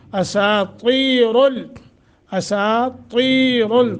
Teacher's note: اساطیر، اساطیر، طا موٹا، را موٹا